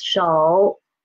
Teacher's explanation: this third tone here is really started from the pitch 2. And it falls to pitch 1. And it didn't rise up. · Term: half third tone